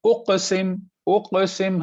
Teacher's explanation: ये काफ पर कलकला होगा क्योंकि यहाँ सुकून।